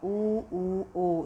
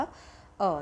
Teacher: ऊ ओ, इनमें हमारे होठों की शेप कैसे हो जाती है, गोल हो जाती है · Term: वृत्ताकार स्वर